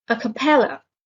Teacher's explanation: a capella has a stress on the third syllable